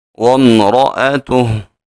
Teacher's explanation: حمزہ کو خوب تحقیق سے ادا کریں گے